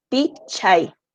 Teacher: la mayor fuerza de voz en pi porque es la penúltima sílaba